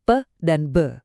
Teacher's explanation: Kalau kita pakai kedua bibir atau bilabial buat menghentikan udara, kita dapat bunyi kayak pe dan be